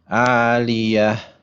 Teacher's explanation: When there's a ta at the end of a sentence, it becomes a ha. So we remove whatever vowel is there, except if it's a fathatain.